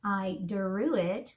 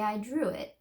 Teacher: So we don't really say I drew it, we say I drew it. See how it sounds like a j, a little j in there? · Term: j sound with the R